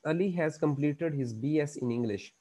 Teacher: मसलन आप एक स्टेटमेंट देते हो, एक फिक्रा बोलते हो, एक बात करते हो और वो फॉलिंग की तरफ जाती है, आपकी इंटोनेशन नीचे की तरफ जाती है, तो इसको कहते हैं फॉलिंग इंटोनेशन. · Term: falling intonation